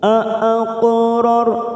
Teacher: Aaqo ada 2 huruf hamzah, maka kita membacanya putus aaqo, lalu ketemu dengan huruf qaf sukun qalqalah sughra. Kita pantulkan dengan posisi bibir kita seperti cemberut. Aqrar ra sukun karena sebelumnya fathah, kita baca tafkhim ror.